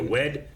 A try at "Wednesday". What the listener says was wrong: Wednesday. You don't say the D. Does it sound D?